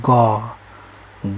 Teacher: ग घ भन्दाखेरि एउटा घर्षण भएको हामीलाई अनुभव हुन्छ वा कम्पन भएको एउटा अनुभव हुन्छ। त्यसै भएर यसलाई घोष ध्वनि भनिन्छ र यसको सिधै विपरीत चाहिँ जुन हुन्छ त्यसलाई अघोष ध्वनि भनिन्छ।